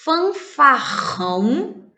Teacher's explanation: na palavra fanfarrão o rr está entre vogais e faz um som forte